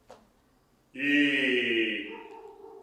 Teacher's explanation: high vowels, meaning that the tongue is high to make an E